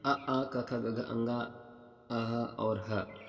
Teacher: वर्णों का उच्चारण स्थान देख लीजिए कंठ में आते हैं